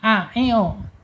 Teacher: hamzah secara makhraj ada di bawah tenggorokan itu bawah ya, a i u di bawah tenggorokan, jangan sampai ke tengah, a i u.